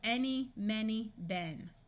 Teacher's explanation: In all three of these words, these vowels take on a short E, and the Y at the end has a long E